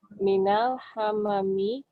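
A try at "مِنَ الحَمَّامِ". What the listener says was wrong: Ada tasdidnya Om ya? Minal hammami.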